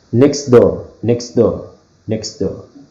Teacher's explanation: we are skipping the phoneme T